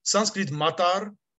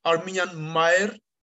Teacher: there is an Armenian sound law according to which intervocalic t disappears.